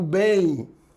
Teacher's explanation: quando eu digo bem a letra m o som é i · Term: semivogal i